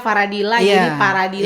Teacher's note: Orang Sunda itu susah sekali sebut huruf fa. Kebanyakan jadi pa.